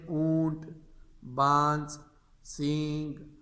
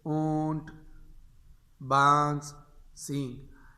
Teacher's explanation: ان میں بھی اخفاء کی جو ہے وہ شکل آتی ہے، ناک میں آواز آتی ہے